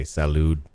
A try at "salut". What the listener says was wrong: No, in French they say salut. With a T.